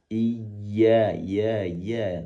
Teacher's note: ya dari lidah tengah yang ditekan ke bawah